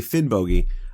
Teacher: Now, I know when I say Finnbogi, I'm putting too much emphasis on the O in the second syllable, but I would say that the hard G that I'm using in Finnbogi is much closer to the Old Norse than the soft Y that you find in the modern Icelandic